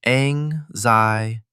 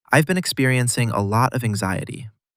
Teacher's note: Today's word, anxiety. 4 syllables. Anxiety. Stress on the second syllable.